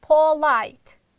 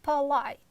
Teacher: the first syllable is unstressed therefore we are reducing it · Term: common sound schwa